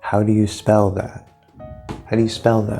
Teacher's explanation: notice we have stress here on how.